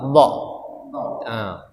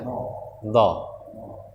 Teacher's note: Huruf isti'la juga, dia juga agak kita angkat pangkal lidah kita, dha. Jadi menggunakan sisi lidah ya, sisi lidah, bukan ujung lidah, tapi sisi lidah atau pinggir lidah ya. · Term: huruf dha